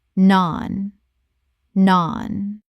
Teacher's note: Rhymes with barn. The vowel is long like the A in father. Example. We ordered three different types of naan and used them to scoop up the remaining curry from the bowl.